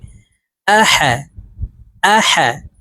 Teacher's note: হা উচ্চারণ হলকের মধ্যখান থেকেই করতে হবে